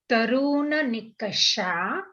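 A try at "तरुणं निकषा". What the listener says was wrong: Tarun nikasha. That way we don't get confused with that there is any swaraha after it.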